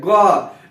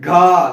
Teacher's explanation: ग धीरे से बोला जा रहा है अल्पप्राण। घा देखिए तेज से बोला जा रहा है